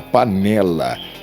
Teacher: Já a paroxítona, panela, ela já possui força na penúltima sílaba